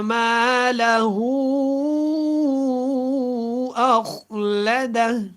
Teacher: اچھا، اخلدہ، آپ نے جب خا کو پڑھنا ہے نا تو خا کے اوپر آپ نے حرکت کو نہیں لگانا، پڑھتے ہوئے اخلدہ پڑھ دیا جاتا ہے، جو کہ ایک کامن غلطی ہے، آپ نے اس کو درست کرنا ہے۔